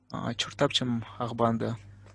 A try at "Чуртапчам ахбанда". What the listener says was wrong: Теперь смотрите по произношению. Помните, я вам говорил не че, а ще. Шуртапшам. Шуртапшам. Давай еще раз.